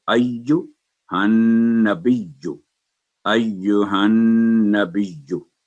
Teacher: इसलिए जब तशदीद आ जाए तो जो बा की अलामत है उसके साथ या पर तशदीद, तो उसको स्ट्रेस दे के उसकी अलामत की अदायगी करेंगे